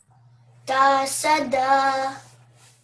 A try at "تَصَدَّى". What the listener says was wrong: Bit more emphasis on the dal because it's carrying the shadda. Tasadda.